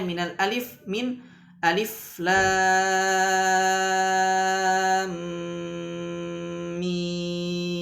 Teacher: tidak ada bacaan panjang di dalam nama Alif